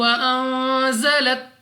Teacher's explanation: नून साकिन के बाद जा हरूफ इख्फा में से है, इख्फा का कायदा है, गुन्ना किया जाएगा